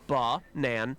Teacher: the schwa sound is the ah sound in the word banana which actually has two schwa sounds in it